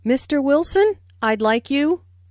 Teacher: Notice the rising intonation on Mr. Wilson